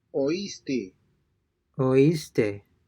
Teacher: Since these words have a written accent over the letter I, the diphthong is broken and the two vowels are pronounced separately.